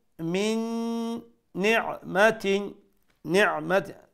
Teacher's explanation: make sure you pronounce the ain from the middle of the throat so that it does not sound like a hamza which comes from the bottom of the throat tan is tanween